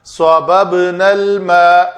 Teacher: با کے اوپر قلقلہ کریں گے